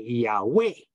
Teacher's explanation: is yah which is correct yeah is but we say Yahweh so the emphasis is on way